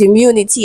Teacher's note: immunity has a stress on the second syllable